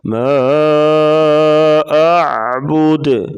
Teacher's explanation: حروف مدہ کے بعد حمزہ دوسرے کلمہ میں ہو تو مد منفصل ہوتی ہے۔ ما اعبد، دال ساکن ہے تو قلقلہ ہوگا یہاں پر۔